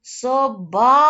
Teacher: собачка наголос наголошений склад у нас склад бач